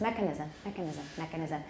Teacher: when you do stress mechanisms, make sure the stress is on the first syllable